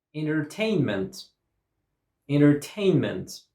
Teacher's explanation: Stress goes on tain.